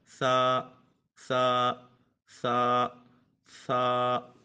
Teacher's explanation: اس میں سیٹی کی آواز بالکل پیدا نہیں ہوگی کیونکہ یہ حروف صفیریہ میں سے نہیں ہے